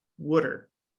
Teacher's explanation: that w starts having a pressure on the following aw sound, pulling it up so that it starts sounding more similar to the w